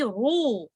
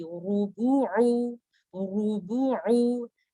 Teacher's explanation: چونکہ را ہیوی ہے تو میں پڑھوں گی رو، میری بیک آف دا ٹنگ اپ ہو جائے گی